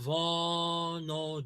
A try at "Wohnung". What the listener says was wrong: It's a double N. So the vowel is open as you did, but it's von, and then make sure you get to the double N.